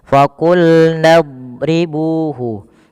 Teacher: huruf dad tidak boleh mantul kebanyakan kita ada yang memantulkan